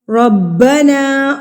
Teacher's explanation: را کو پر پڑھیں گے کیونکہ یہاں پہ ہمارے پاس زبر کے ساتھ آ گیا ہے